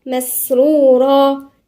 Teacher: مسرورا، هنا في إيه؟ في همس عند السين والراء مفخمة